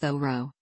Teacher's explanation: the name should be pronounced though Roe with the H sounded and stress on the first syllable